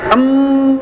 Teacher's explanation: kalau bunyi em kan makhrajnya ada di bibir dan rapat